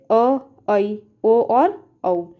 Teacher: अर्धविव्रत स्वर को बोलने पर मुख विव्रत स्वर से थोड़ा कम खुलता है